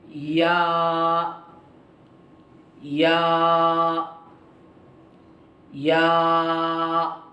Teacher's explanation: इसका मखरज ज़बान की बीच का हिस्सा ऊपर के तालू से लगाना। ये जो ज़बान की बीच का हिस्सा है ऊपर के तालू से लगाना, यहाँ ऊपर के तालू से लगाएंगे तो ये हर्फ अदा होगा।